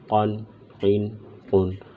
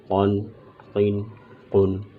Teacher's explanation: قاف کو موٹا کر کے پڑھیں گے چونکہ قاف حروف مستعلیہ میں سے ہے، موٹے حرفوں میں سے ہے، لہٰذا قاف کو پر پڑھیں گے۔